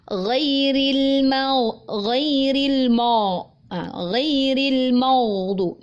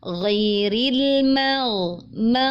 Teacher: Ma tipis, hati-hati, kemudian huruf ghain itu tebal karena dia isti'ala. Hati-hati, huruf mim tidak terpengaruh oleh huruf ghain yang tebal sehingga beberapa pembaca ada yang membacanya menjadi tebal.